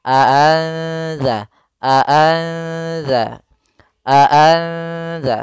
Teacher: suara nunnya sedikit tapi disamarkan ke huruf setelahnya maka di sini cara membacanya adalah nunnya disamarkan kepada huruf Dal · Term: ikhfa